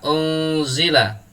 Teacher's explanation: Kebetulan di sini ada nun sukun bertemu dengan za. Cara membacanya, suara nun sukunnya dibaca samar, kemudian disertai dengan mendengung. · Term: ikhfa hakiki